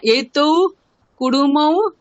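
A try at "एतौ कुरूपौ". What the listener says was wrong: কুরুমৌ না কুরুপৌ, রূপহ রূপৌ। হ্যাঁ, এতৌ কুরুপৌ পূর্বম সুন্দরৌ আস্তাম।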